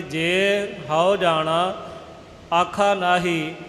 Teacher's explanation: ਜੇ ਹਾਓ ਇਹ ਇਕੱਠਾ ਨਹੀਂ ਕਰਨਾ, ਜੇ ਲੰਮਾ ਕਰਕੇ